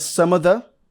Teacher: there was no V sound there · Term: connected speech